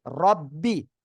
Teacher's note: র উপরে জবর মোটা আওয়াজে পড়তে হবে